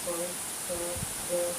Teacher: અહીં તમે પ, ફ, બ, ભ, મ બોલાયેલ સાંભળ્યું ને? તે બોલતી વખતે હોઠ એકબીજાને અડે છે, તેથી આ ઓષ્ઠ્ય વ્યંજન છે.